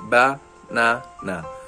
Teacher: word banana for example the central this the central syllable is longer or stressed when you say it naturally ba na na try saying it out loud to hear where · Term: natural emphasis